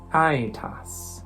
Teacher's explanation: e u are pronounced in specific ways in classical Latin pronunciation this diphthong AE is pronounced I like in the English words I or my